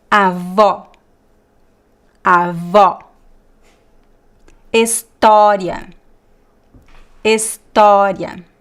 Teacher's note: all these examples they always very very open and also stressed